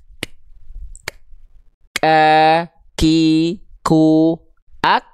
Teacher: artinya apa syiddah itu artinya adalah tertahan suara Nah ya maka ketika hamsnya bersandingan dengan syiddah maka si nafasnya karakternya Hanya berupa percikan nafas · huruf kaf itu dia punya sifat hams tapi kadar nafasnya hanya berupa percikan nafas. Kenapa? Karena sifat hamsnya tidak bersandingan dengan sifat yang namanya rokhwah tuh, tapi dia dengan sifat namanya syiddah.